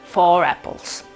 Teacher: è un r che torna fuori dove eventualmente non dovrebbe essere pronunciata ma si pronuncia per aiutare a in qualche modo introdurre la vocale della parola che segue